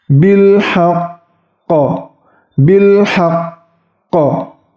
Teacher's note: Bil haq ditahan kemudian dipantulkan seperti qalqalah kubra.